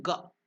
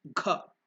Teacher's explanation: If you use more prana, lung energy, then it becomes ka, ka, ka. So if you use less energy in ga, it is ga. Then if you use more energy, mahaprana, it becomes gha.